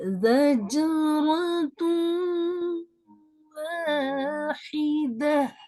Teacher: تنوین کو اریز ہی کر دیا ہے، نیکسٹ لیٹر کو پڑھ رہے ہیں اور غننے کے ساتھ پڑھ رہے ہیں